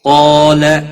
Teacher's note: قاف حروف مستعلیہ میں سے ہے، پر پڑھا جائے گا۔ مستعلیہ کے بعد جب الف ایک ہی کلمے میں آ جائے تو وہ بھی پر پڑھا جاتا ہے، الف مدہ بھی بنتا ہے، ایک الف کے برابر کھینچ کر پڑھیں گے۔